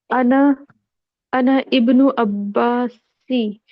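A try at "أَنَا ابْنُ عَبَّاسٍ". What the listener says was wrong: अब नून को सीधा मिला दीजिए, इस अलिफ को साइलेंट कर देंगे बीच में आने की वजह से।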